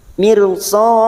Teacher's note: ra sukun yang didahului kasroh kita baca tarkik atau tipis meringis bibir kita tersenyum